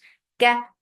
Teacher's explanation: Na, for fatha, the sound is short. Ka is very light, and it has no hums.